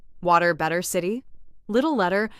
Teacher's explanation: In American English, the T often sounds softer in the middle of a word. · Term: American T